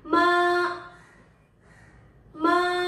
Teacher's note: यसको माथि हामीले सिधा धक्का राख्यौ भने त्यो हो फर्स्ट टोन. फर्स्ट टोन बोल्दाखेरि सिधा बोल्ने, जस्तै मा मा.